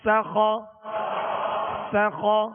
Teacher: سین کو سختی سے پڑھنا ہے، سیٹی کی آواز اس میں پیدا ہوگی اور باریک پڑھنا ہے